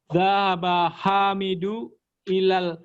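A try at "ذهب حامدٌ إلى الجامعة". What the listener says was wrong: Hamidun. Tanwin Pak, nama laki-laki Hamid itu tanwin.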